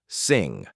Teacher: Same contact as K and G. Air flows through the nose. Voice is on. The sound ends smoothly. No burst of air at the end. · The back of the tongue presses the soft palate. Same contact as K and G.